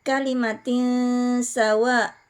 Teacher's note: ada tanwin bertemu huruf Sin hukum tajwidnya adalah ikhfa dibaca samar disertai dengung